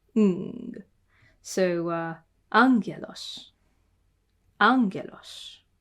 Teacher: Two gammas together are ng. A gamma in these combinations is a ng kind of sound.